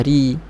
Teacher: Ri terus nipis, jangan roi. Jangan ambil atas ke bawah, roi. Terus ke bawah, ri.